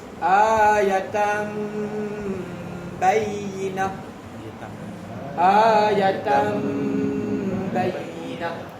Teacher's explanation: Jadi tuan-tuan, huruf iqlab ni nun mati jumpa ba, tanwin bertemu ba, kan? Hukum dia iqlab. Dia kena dengung dan tutup mulut rapat.